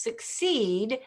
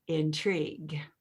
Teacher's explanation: succeed and intrigue don't really rhyme. They have the same long E though